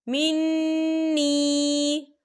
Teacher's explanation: فمن شریب منہ فلیس منی، یہ دیکھیں منی، یہاں پر یا مدہ ہو رہا ہے، یا ساکن سے پہلے زیر ہے، تو ہم اسے 2 یا 3 حرکت کے برابر کھینچے پڑھیں گے